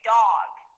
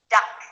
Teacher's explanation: Well, dog has a different vowel sound than duck. Dog is longer. We say dog. Compare this to duck, which is very short and a bit sharp. This is an ah sound, dog, versus duck.